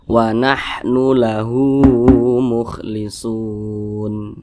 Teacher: Panjangnya itu sama dengan mad tabi'i, 2 harokat atau kira-kira 2 ketukan. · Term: mad silah qasirah